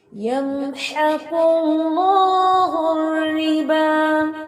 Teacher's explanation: اللہ کے نام کے اوپر جو ہے نا وہ آپ کو اشبائی فتحہ نظر آ رہی ہے، کھڑا زبر ہے، اس کو لمبا کرنا ہے آپ نے